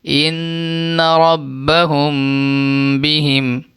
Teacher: اس میں اخفاء شفوی میں کہا گیا تھا کہ میم ساکن کے بعد با آئے تو غنہ کے ساتھ اخفا ہوگا، یعنی میم ساکن کے بعد با آئے تو غنہ کر کے اخفا کے ساتھ پڑھیں گے۔